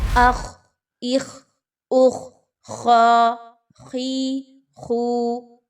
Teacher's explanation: خا کو کھ کی ساؤنڈ کے ساتھ ملا رہے ہوتے ہیں